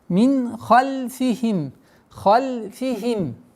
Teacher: Здесь у нас ясное произношение, правило изгар, ясность.